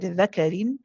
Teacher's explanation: Here my tongue does not go to the makhraj of the noon. Instead, it preps, it gets ready for the next letter, which in this case is letter dal. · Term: ikhfa haqiqi